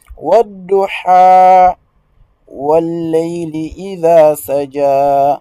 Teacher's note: à la fin de chaque verset vous faites une petite prolongation de deux temps